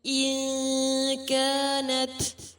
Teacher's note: نون ساکن کے بعد کاف ہے، اخفا کیا جائے گا، تائے ساکنہ پر ہمس ہوگی.